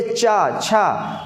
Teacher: जीभ ऊपर स्पर्श कर रही है, मुड़ नहीं रही है, बट ऊपर हल्की सी जा रही है कि नहीं जा रही, चा, छा, जा, जीभ ऊपर लग रही है तालु में कि नहीं, तो ये तालव्य है। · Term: तालव्य वर्ण